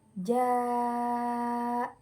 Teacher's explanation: huruf hamzah dalam satu kalimat contohnya Jaa cara bacanya yaitu ee dipanjangkan sebanyak 5 harakat atau 2 setengah Alif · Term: mad wajib muttasil